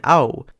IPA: au